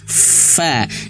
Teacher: Bibir bawah yang perutnya itu bagian dalam bibir bawah menyentuh ujung gigi seri atas. Fa. Dan ada anginnya. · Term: huruf fa